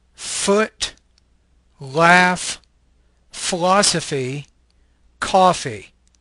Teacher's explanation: This is a labial dental fricative voiceless consonant.